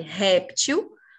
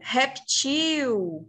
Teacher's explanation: A língua portuguesa aceita que a gente fale réptil como uma paroxítona ou reptil.